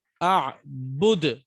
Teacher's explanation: اعبد, جہاں جہاں آپ وقف کریں گے اور دال کو آپ ساکن کریں گے, ان کیس آف اسٹاپنگ آن دال آپ اس کو ساکن دیں گے, ٹھیک ہے نا. تو آپ نے یہاں پر قلقلہ کرنا ہوگا, اعبد, ٹھیک ہے.